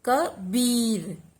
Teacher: बी पर। ब पे विशेष बल दिया और उसकी मात्रा पर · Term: बलाघात